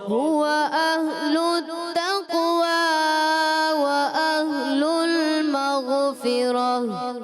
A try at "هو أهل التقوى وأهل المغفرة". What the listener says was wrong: مغفرة غیر میں کلکلہ نہیں کرنا. هو أهل التقوى وأهل المغفرة.